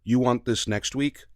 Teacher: just use question intonation on the end of a statement